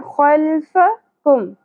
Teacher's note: ऐ दी कुम, वमा खल्फकुम, खौ पुर होगा खराश के साथ, फा की ज़बर को ज़्यादा नहीं खींचेंगे